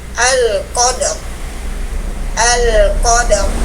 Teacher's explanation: huruf ro dibaca tafkhim karena sebelumnya ada harakat nih Fathah di huruf q Jadi huruf ro dibaca tfkim alqadr alqadr ya dibaca tafhim nah